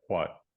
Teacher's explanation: I think it turns toward wedge